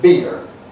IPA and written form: biːr (beer)